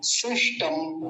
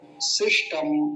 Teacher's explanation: पहले दंत्य सकार फिर मूर्धन्य शकार